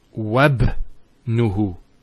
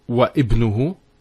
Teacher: Now, when there's something before it, like here the waw, and regardless of what's before it, if we're actually reciting it, we don't pronounce this Hamza. We go straight to the ba. So it's wabnuhu. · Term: joining Hamza